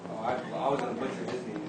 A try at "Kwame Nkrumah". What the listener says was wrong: Kwame, and always pronounce the N, Kwame Nkrumah. It's not silent, we don't skip it. Kwame Nkrumah.